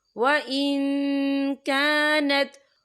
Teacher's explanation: ثلث ما ترک وَإِن كَانَتْ، یا دیکھیں وَإِن، یا نون ساکن ہے، نون ساکن کے بعد جو ہے کیف آ رہا ہے، اور کیف جو ہے اکفا کا ورڈ ہے، تو ہم یہاں اکفا کریں گے، نون ساکن کی آواز کو ناک میں چھپائیں گے۔